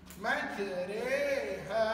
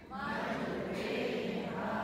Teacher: Mat asli. 2 harakat. Dibaca juga dengan mat asli. Tapi dalam masa sama kita baca condong imalah.